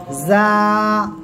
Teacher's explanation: জিহ্বার আগা, সামনের নিচে 2 দাঁতের পেটও আগার সঙ্গে লাগাবেন, লাগিয়ে উচ্চারণ করবেন জা।